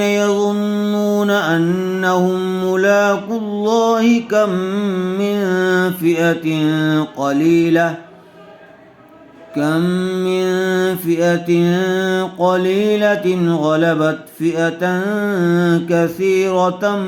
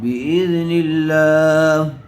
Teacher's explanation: لفظ اللہ کے لام کو باریک کر کے پڑھیں گے